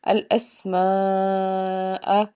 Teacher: اسی کلمہ کے اندر حمزہ آیا ہے، اس لیے ہم اس کو کہیں گے مد متصل، اس کو ہم 5 الف کے برابر کھینچ کے ادا کریں گے